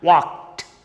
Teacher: what w a l k e d you can find here two spoken english rules are applied here l is silent and e d is pronounced as ta